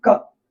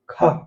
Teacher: देखते हैं कि हमारा जो अल्प प्राण होता है, अल्प प्राण, अल्प माने कम, प्राण माने वायु, जब मुख से हवा कम निकलती है, मुख से कम हवा निकलती है, ठीक है, कम हवा, जब मुख से कम हवा निकलती है तो उसको अल्प प्राण कहते हैं। यानी जैसे हम बोलेंगे क तो हवा कम निकलेगी, जब बोलेंगे ख तो पूरी की पूरी हवा बाहर निकल जाएगी।